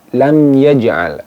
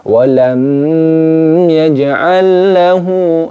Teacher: Ini disebut dengan idhar syafawi. Jadi dibaca jelas mim sukunnya, tidak boleh didengungkan.